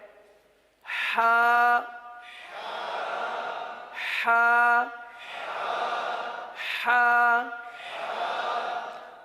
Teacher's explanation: इस हर्फ का मखर क्या है हलक का दरमियान वस्ते हलक · اب اس حرف کا مخرج کیا ہے؟ حلق کا درمیان، وسط حلق